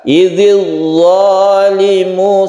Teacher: Jadi ketika idzil langsung kita mencucu, kita membentuk huruf dha ya. Rongga mulut kita itu bentuk hurufnya itu dha, itu harus jelas karena dia itu isti'la. Idzil zalimu, sedikit angkat ke langit-langit kalau dha itu. Lain dengan zal.